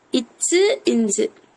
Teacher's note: நாக்கோட நடுப்பகுதியும் அன்னத்தோட நடுப்பகுதியும் தொடுறதால வர்றது இச்சு இஞ்சு